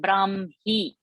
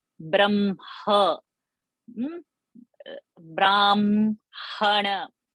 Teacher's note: So the pronunciation is first ma and then the ha.